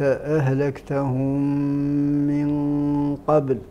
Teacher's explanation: الميم الساكنة بعدها ميم متحركة، فما الحكم؟ الإدغام. التام بغنة. الإدغام التام بغنة، وهو من الإدغام المتعين لكل القراء وللعرب في حال إسكان الميم، حال عدم وصل الميم تدغم في مثلها، لأن إدغام المتماثلين هذا واجب.